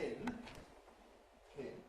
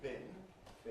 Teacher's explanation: We know we get aspiration in pin, pin, not in bin, bin